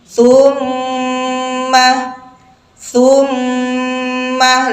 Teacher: ghunahnya disempurnakan minimal tahan selama dua ketuk tumma tsumma lebih sempurna lagi kalau kita bisa menahan sampai tiga